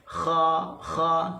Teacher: huruf kha walaupun dia isti'la, tapi dia juga bersifat dengan hams. Kha kita akan rasa angin. Kalau kita letak tangan kat depan ni, kita akan rasa angin tempuh ataupun rempuh tangan kita.